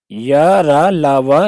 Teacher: इनका उच्चारण स्वरों और व्यंजनों के मध्य का है। इनका उच्चारण जिह्वा, तालु, दांत, ओंठों के स्पर्श से होता है, परंतु स्पर्श पूरा नहीं होता। या रा ला वा, हम इनका उच्चारण करेंगे तो इनके सीधे वायु न तो एकदम से बाहर निकल रही है और ना ही कहीं फंस रही है जीभ। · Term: अंतस्थ व्यंजन